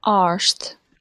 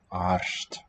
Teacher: Sounds like an S is creeping in. But I think it's an effect of the coda R devoicing.